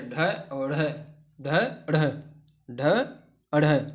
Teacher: बोलते समय जीभ ऊपर उठकर मूर्धा को स्पर्श करे और झटके के साथ में नीचे आ जाए, इस प्रकार के व्यंजन को उत्क्षिप्त व्यंजन कहते हैं।